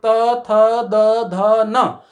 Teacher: जिनके उच्चारण में हमारी जिह्वा दांत को स्पर्श करती है उनको कहते हैं दंत्य वर्ण